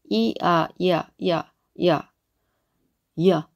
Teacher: 연결시켜서 발음을 해보면 이아 이야 이게 완전 생소리 이가 아니라 이라고 했죠. 이와 아를 연결시키면 야가 되죠. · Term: 주전자